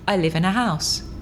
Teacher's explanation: both articles are not stressed in a sentence